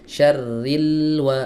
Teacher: Kalau huruf lam ini enggak punya rakhawah, dia punyanya bainiah. Sedanglah alirannya. Enggak enggak terlalu panjang ya.